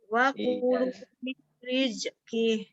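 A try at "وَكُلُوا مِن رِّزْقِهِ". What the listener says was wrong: Dan juga jangan sampai ada z-nya hilangkan. Coba ulang lagi.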